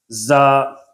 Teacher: یہ سیٹی والا حرف ہے، اس کو تھوڑا سا سیٹی سے پڑھیں گے، زا۔